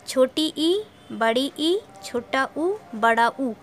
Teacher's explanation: संवृत स्वर के उच्चारण में मुख द्वार सकरा हो जाता है